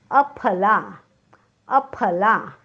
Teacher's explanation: अफलामधला फ हा ओष्ठवर्ण आहे. जाणीवपूर्वक उच्चार करा.